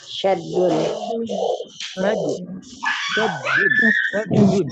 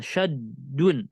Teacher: Huruf yang pertamanya sukun, yang keduanya berharokat. Maka kita idghamkan huruf dal yang pertama kepada dal yang kedua. Di mana kita ucapkan menjadi satu huruf dan yang bertasydid.